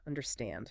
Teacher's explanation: The stress is at the very end. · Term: syllable stress